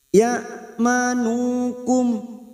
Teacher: hamzah sukun sifatnya siddah, harus dibaca jelas, jangan samakan dengan ain. Ini hamzah maka bunyinya ya manukum, ya bukan ya manu, bukan ya manu, tetapi ya manukum.